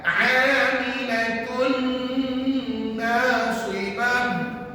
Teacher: dengung yang kita buat pada mim dengan nun tadi adalah dengung yang sangat sempurna. Dengungnya betul-betul masuk dalam rongga hidung kita. Dan kebetulan tuan-tuan, nak sebut mim dengan nun mesti guna pangkal hidung. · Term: idgham kamil